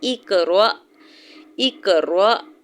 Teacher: اقرأ، اقرأ حمزہ کی زیر کو قاف ساکن کے ساتھ ملاتے ہوئے قاف ساکن پہ کلکلا کریں گے، یعنی قاف کو ہلا کے پڑھیں گے۔ را کے اوپر زبر ہے، ساتھ حمزہ ساکن ہے تو یہاں پہ جھٹکا دیں گے